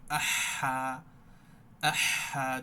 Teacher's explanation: আর এই হাটা জিহবার মধ্যকান সংকোচ করে ফিসফিসানি আওয়াজ করে পড়তে হবে, আহা, আহা, যত ফিসফিসানি করা যায়।